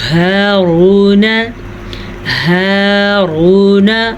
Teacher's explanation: ہا کو مخرج سے نکالیے گا اور را کو پر پڑھنا ہے